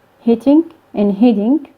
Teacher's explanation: But if a participle suffix is added to each of these, like hitting and hitting, the words are pronounced the same, since the alveolar stop is converted to a flap in both cases. And these two distinct sounds, which were different from each other in underlying representation, they became, both of them, converted to the flap in the phonetic representation.